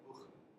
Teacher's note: just a very kind of throaty, gaggy H sound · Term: velar fricative